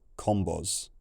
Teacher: in the red culture, the final S got voiced to a Z